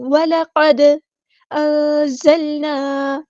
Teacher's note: وَلَقَدْ نہیں، وَلَقَدْ أَنزَلْنَا. نون ساکن کی آواز کو ہم یہاں چھپا دیں گے، اخفا ہوگا. زا کو باریک لیٹر ہے ہمارا، لائٹ لیٹر ہے تو اس کو باریک پڑھنا ہے اور سختی سے ادا کرنا ہے.